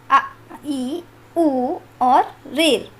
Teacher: ह्रास स्वर इसके उच्चारण में केवल एक मात्रा का समय लगता है। ह्रास स्वर 4 होते हैं, अ, ई, उ और ऋ।